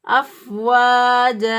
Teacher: واو زبر الف با، یہ واو مدہ ہے، سوری الف مدہ ہے، الف پہلے والے حرف پر زبر ہے، تو اس لیے اس کو ایک الف کے برابر لمبا کریں گے